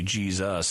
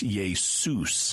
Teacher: In English, when we have an S between two vowels, so it's an intervocalic S, right. We tend to pronounce it as Z, which is why we say Jesus in English, but it's not, that rule does not apply to other languages.